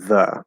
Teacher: the full pronunciation of the word the is the so it's a voiced th which is a difficult sound for many english learners and then